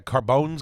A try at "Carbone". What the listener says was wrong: Carbones, you put an S on it. Carbone.